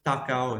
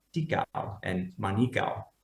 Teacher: If you look at Kayan, it's going to be tako. But in Central Sarawak languages, and only in Central Sarawak languages, the A in the penultimate syllable became an I